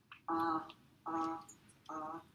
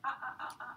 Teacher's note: Now, when you phonate the ah, and you get vocal fold vibration, right, your soft palate is going to move up and back. And when you do that glottal stop in between, ah, the palate is going to drop down in between. But you got to really stop to have that happen.